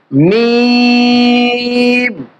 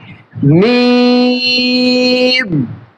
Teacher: এই হরফের মাখরাজ হচ্ছে 2 ঠোঁটের শুকনা অংশ থেকে, 2 ঠোঁটের শুকনা অংশ থেকে, মিম।